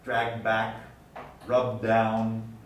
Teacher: either T or D, both the voice and the voiceless consonant, gets deleted when surrounded by two stops.